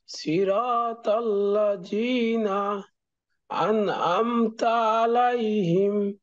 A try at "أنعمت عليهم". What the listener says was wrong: এই আইনটা হামজার মতো মনে হচ্ছে। আনতা আলাইহিম, আনআমতা বলেন।